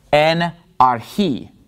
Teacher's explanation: So the accent is on the last syllable in this word, arhi.